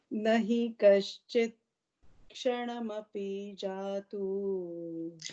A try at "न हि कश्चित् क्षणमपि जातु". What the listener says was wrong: Now, here you're breaking after kshanamapi. न हि कश्चित् क्षणमपि.